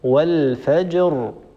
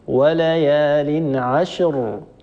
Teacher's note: والفجر الجيم نعطيها حقها من السكون، والراء أيضا لابد من إعطائها حقها من السكون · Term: الجمع بين حرفين ساكنين